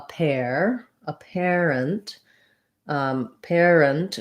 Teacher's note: the stress is on the pair syllable